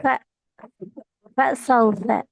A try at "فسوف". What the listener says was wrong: அது ரைட்டு இல்ல ராங். ஏன் ராங் என்றால் ஃப சௌஃப என்று பிரிச்சு ஓதுறீங்க. எஸ் அப்படி ஓட்டுற இல்ல. ஃபசௌஃப ஃபசௌஃப.